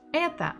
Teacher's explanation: Ударение, the stress, is on буква Э. So, О, without a stress, без ударения, will give us sound А.